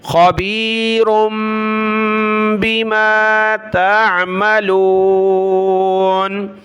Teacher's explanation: را کے اوپر دو پیش کی تنوین ہے، اس کے بعد با ہے تو چھوٹی میم آ گئی، خبیر بما تعملون۔